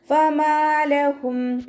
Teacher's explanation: ഫമാലഹും ഫ ലൈറ്റാക്കിയിട്ട് ഉച്ചരിക്കുക. മീമിൻ്റെ കൂടെ അലിഫ് മദ് വന്നു, 2 കൗണ്ട് നീട്ടിക്കൊടുക്കുക.